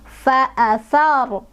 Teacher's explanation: Ro-nya dibaca tebal atau tafkhim karena ro sukunnya didahului oleh huruf berbaris fathah. Jadi kalau misalkan lihat ro sukun, menentukan tebal atau tipisnya, kita lihat huruf sebelumnya.